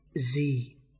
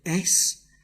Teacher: feel the vocal cords vibrates in the Z but not in the S